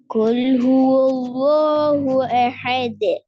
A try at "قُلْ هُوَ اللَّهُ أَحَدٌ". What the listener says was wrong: குல்லுஹு என்று சில சேர்க்கப்படாதுன்னு சொல்லுங்க. இந்த லாமையும் இந்த ஹாவையும் சேர்த்து உச்சரிக்க கூடாது. قل هو الله أحد இந்த லாமையும் ஹாவையும் சேர்க்கும் போது வரும்.